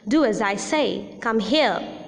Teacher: falling tone is also using used in commands